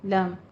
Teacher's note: ان لم نہیں کہنا ہے، ادغام بلا غنہ کرنا ہے، ادغام تام کرنا ہے